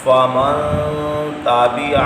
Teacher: اخفاء کہتے ہیں خفی کرنا، آواز کو ناک میں لے جا کے چھپانا ہے۔